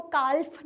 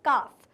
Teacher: अब काफ में भी हम लोग एल को प्रोनाउंस नहीं करते हैं, हम कभी भी उसको काल्फ नहीं कहते, हम क्या कहते हैं, काफ। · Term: एल साइलेंट